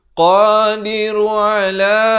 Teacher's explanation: ain makhrajnya di tengah kerongkong. Ala 4 atau 5 harakat.